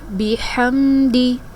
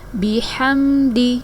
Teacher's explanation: دال کو کھینچ کر نہیں پڑھیں گے، دال کے نیچے زیر کی حرکت ہے، حرکات کو کھینچ کر نہیں پڑھا جاتا۔